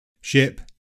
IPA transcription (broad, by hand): ʃɪp